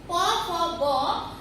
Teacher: এই 5 ভাগের ভাগ করা যায়, যথা ওষ্ঠ স্পর্শ ব্যঞ্জন প, ফ, ব এগুলো 2 ঠোঁটের স্পর্শ লেগে হয়